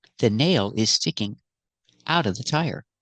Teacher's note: We use it a lot and the pronunciation is a little different. Not out of, but outa.